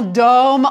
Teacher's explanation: The ENT is silent, but it makes you pronounce the final consonant of the stem.